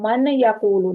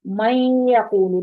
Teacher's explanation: نون کی آواز کلیئر نہیں آئی لیکن ناک میں چلی گئی ہے تھوڑی سی ، تو یہ ایک الف جتنا، مطلب 2 حرکت جتنا آواز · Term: غنہ